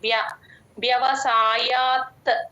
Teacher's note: వ్యవసాయాత్మిక బుద్ధిహి వ కింద య వత్తు ఉందండి పట్టుకొని చెప్పాలి వ్య పైన పైన టీత్ మీకు కింద లిప్స్ మీద ఎప్పుడైతే టచ్ అవుతుందో అప్పుడే వ కింద య వత్తు క్లియర్ గా వినిపిస్తుంది